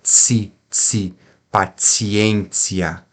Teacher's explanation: aqui paciência a sílaba forte é o e por isso que quando a sílaba forte não cai no ti aí esse ti fica como se fosse um TS